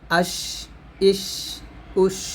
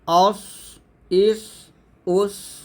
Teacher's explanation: আর সদ কিন্তু সিনের মত না এখানে সদ মোটা করতে হবে